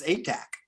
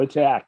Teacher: the accent is on the first syllable